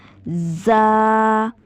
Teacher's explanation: दोनों दांतों को आपस में जब आप मिलाएंगे सख्ती से, ठीक है, तो तब अदा होगा ज़ा, और ज़बान इन दोनों दांतों पर लगेगी, ठीक है। अच्छा इसके बाद देखें सीन। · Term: सीटी वाला हर्फ